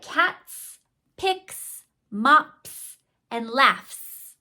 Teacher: The sound before the S was an unvoiced sound, so all of those had the S sound at the end. Now, if the sound before the S is actually a voiced sound, the letter S is going to represent the Z sound.